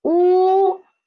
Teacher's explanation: first tone, ooh, level and flat